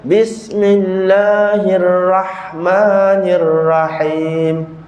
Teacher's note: saya sebut huruf ra, cuma tak tebal saja. Sifat tebal dia tak ada.